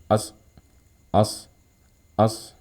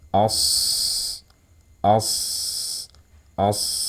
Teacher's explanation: saat ia dalam keadaan sukun kita alirkan suaranya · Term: rakhaah